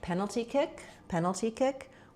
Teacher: we have the main stress is on penalty, then kick gets some secondary stress.